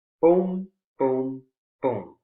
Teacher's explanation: They're all stressed. All three content words, all three have strong beats.